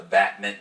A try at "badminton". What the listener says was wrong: Not mitten.